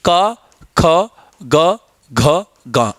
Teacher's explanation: का की अपेक्षा खा पर अधिक बल लग रहा है, गा पे फिर कम, घा पर फिर ज्यादा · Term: महाप्राण